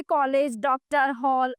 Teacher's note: कुछ शब्दों जैसे कॉलेज, डॉक्टर, हॉल आदि में अ ध्वनि पाई जाती है। यह ध्वनि आ और ओ के बीच में स्थित है।